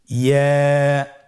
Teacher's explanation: ইয়া হরফটি উচ্চারণের ক্ষেত্রে বারিক হবে এবং 1 আলিফ টেনে পড়তে হবে।